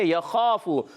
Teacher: خا پر حروف میں سے حروف مستعلیہ میں سے موٹا ادا کریں گے، خا کے بعد الف جو آ رہا ہے یہ بھی موٹا ادا ہوگا